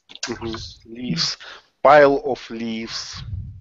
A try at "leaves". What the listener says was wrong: Leaves, not leaves, but leaves. So F, V. So V will get the vibration.